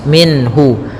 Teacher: izhar halqi yaitu adanya nun sukun bertemu dengan ha yang mana Ha termasuk huruf-huruf yang kita keluarkan dari alhalq yaitu tenggorokan kita maka suara nunnya harus jelas